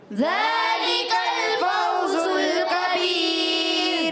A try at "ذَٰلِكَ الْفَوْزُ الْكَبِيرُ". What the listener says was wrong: کاف کو باریک رکھیں گے. اچھا فوزل میں زا کی ادائیگی, کبیر میں کاف کی ادائیگی باریک رکھیں.